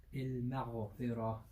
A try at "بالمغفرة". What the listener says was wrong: too much qalqal on the ghain.